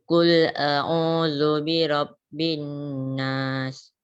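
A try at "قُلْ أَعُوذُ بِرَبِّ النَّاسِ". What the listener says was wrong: Panjang sikit nas tu. Qul a'udzu birabbin nas. Panjang sikit.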